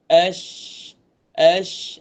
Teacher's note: Shin sama, tempat dia depan sedikit daripada huruf jim.